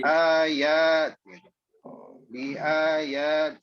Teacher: B-nya pendek, A-nya itu yang panjang.